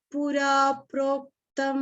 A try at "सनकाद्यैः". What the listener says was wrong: Sanakadhyai. Dhya is happening. You are saying dhyai. I don't want dhyai sound. Sanakadhyai.